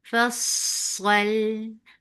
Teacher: Sod is heavy but Lam will be light and give tawassut on Lam